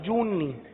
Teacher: جو کو نون کے ساتھ ملا کر گنا کر کے پڑھیں گے